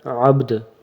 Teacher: دال کے اوپر بھی جھٹکا دینا ہے اور با کے اوپر بھی قلقلہ کرنا ہے